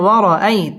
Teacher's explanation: জবরের বাম পাশে জাজম ওয়ালা ইয়া লিনের হরফ তাড়াতাড়ি পড়তে হবে।